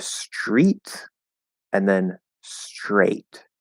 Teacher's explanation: T plus R consonant is going to be chur. Changes the T into a CH, and we sort of blend it into that R.